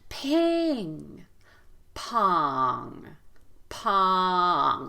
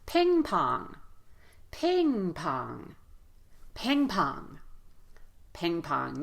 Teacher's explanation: so both vowels will be loud long and you'll hear a step down in Pitch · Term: equal stress